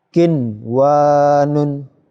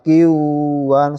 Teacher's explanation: Dalam satu kata, ya, disebut idhar, bacaan idhar wajib. Bacaan nun sukunnya jelas, ya, tidak dimasukkan, tidak mendengung.